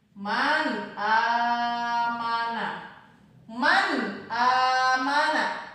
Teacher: Cara membacanya ini dibaca dengan cara jelas, tidak boleh mendengung ataupun tidak boleh dibaca samar. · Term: izhar